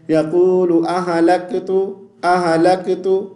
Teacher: ہا پہ ہم قلقلہ کر دیتے ہیں اور اس ہا کے اوپر زبر کی آواز پیدا ہو جاتی ہے